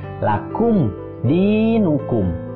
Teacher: Di itu dibaca panjang 2 harokat.